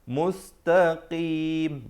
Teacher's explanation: Makhraj huruf qaf dan kaf dia hampir-hampir dekat. Qaf di belakang sedikit.